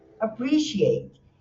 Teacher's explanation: a sílaba tônica é o segundo, então fica appreciate.